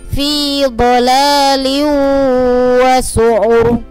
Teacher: roknya dibaca tebal karena roknya ini jatuh setelah harokat dhamma dan diwakafkan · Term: tafkhim atau tebal